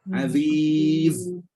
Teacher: Bila kita baca huruf Sin ni, kita rasa bila kita baca huruf Zai ni, kita baca Aziz. Bila berhenti, nampak macam bunyi ada angin. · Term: sofir